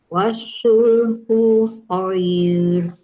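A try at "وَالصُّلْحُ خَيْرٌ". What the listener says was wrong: Ku tu pendek. Wasulhu khair. Kalau baca wasul dia tak ada sabdu ni kerana ada sabdu huruf sod tu. Wasulhu.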